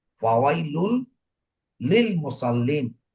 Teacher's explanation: ফাওয়াইলুল লিল মুসাল্লিন, যদিও এখানে কি ছিল, তানবিন ছিল। তানবিনের পরের শব্দে সংযুক্ত করেছি, কিন্তু আমি গুণনা করিনি